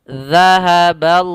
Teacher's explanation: Pada lafal zal, cara membacanya yaitu ujung lidah menempelkan kepada gigi seri kita sambil dikeluarkan sedikit sebagaimana kita melafalkan tha